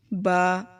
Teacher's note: با دونوں ہونٹوں کو ملا کر پڑھیں گے